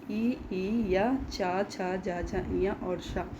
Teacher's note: ई या चा छा जा झा इया और शा, इनका उच्चारण स्थान क्या है? तालु है।